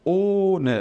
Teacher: ele vai ser um O fechado e ele vai ser longo. Então, eu falo ohne, demorando um pouquinho mais, tá bom?